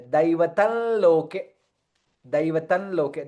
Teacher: Anuswara followed by Lakara. Hence, additional Lakara comes there.